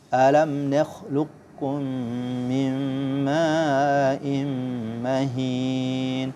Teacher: Qaf sama kaf, ya. Dia di ujung pangkal lidah, tapi qaf lebih jauh.